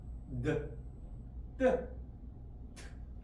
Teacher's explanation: 전부 다 혀끝이 치조를 때리게 됩니다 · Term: 디귿